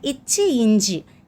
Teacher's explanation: இச்சு இஞ்சு நாவின் இடை நடு அன்னத்தின் இடை.